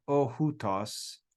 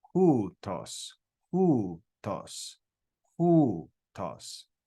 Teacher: So that diphthong, omicron, upsilon, is pronounced as oo. Ooh, and it's got rough breathing, so it's hu, hutos, hutos.